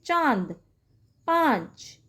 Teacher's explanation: अनुनासिक चंद्र बिंदु होता है, जिसमें मुंह का साउंड ज़्यादा आता है और नाक का कम आता है